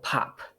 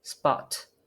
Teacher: at the beginning of the syllable we have an aspiration for example pop